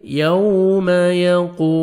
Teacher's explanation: क़ाफ को मोटा करके पढ़ेंगे और वाव मद्द है, वाव साकिन से पहले पेश है, आपने 1 सेकंड क़ाफ को खींचना है